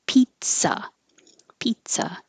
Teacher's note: the Z's sound like a T and an S